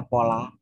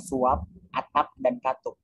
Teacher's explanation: Bila berada pada akhir kata, fonem P tidak diucapkan secara lepas. Bibir kita masih tetap tertutup rapat waktu mengucapkan bunyi ini.